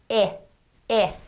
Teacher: you'll see when you make that I sound that the sides of your tongue are touching your molars in the back.